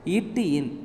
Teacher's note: நாவின் நுனி அன்னத்தின் நுனி மேல் பொருந்துவதால் ஏற்படுகிறது.